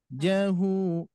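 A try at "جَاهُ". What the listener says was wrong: Nah, kurang panjang 6 harakat.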